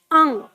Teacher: जब आप इसका उच्चारण करेंगे तो आपके कंठ से आवाज नाक में जाएगी मुख में नहीं आनी चाहिए